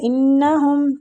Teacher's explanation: نون مشدد ہے، اس پہ غنہ کریں گے